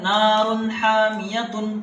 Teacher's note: را پر تنوین آیا ہے 2 زبر، اور تنوین کے بعد حروف حلقی میں سے یہ حمزہ آیا ہے، یہاں حمزہ ہے اور وہی حمزہ یہاں آیا ہے، تو یہاں پر کیا ہوگا؟ اظہار ہوگا، ناک پہ آواز نہیں جانی چاہیے۔